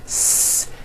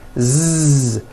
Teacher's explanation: So S has no voicing. S. Z has voicing. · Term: paired consonants